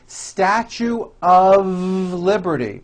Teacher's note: Even though the word of is spelled with an F, we pronounce the word of with a voiced V.